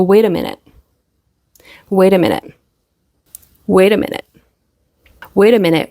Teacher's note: in Connected speech we're going to have the fast D or the flap T